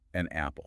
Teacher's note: We want the air to flow smoothly. So organically, over generations of spoken language, we inserted a consonant sound, the N, to act as a bridge. An apple. The air just flows without interruption.